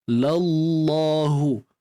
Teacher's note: Kat sini kena tebal. Kalimah Allah kena tebal kerana sebelumnya terdapat baris atas pada lam tu.